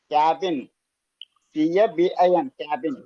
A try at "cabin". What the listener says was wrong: అది. నెక్స్ట్.